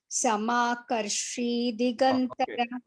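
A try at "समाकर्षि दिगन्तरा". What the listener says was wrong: Samakarsh Digantara, not Samakarshi. There is Raswa Ikar on Digantara. Samakarsh Digantara. Samakarsh Digantara.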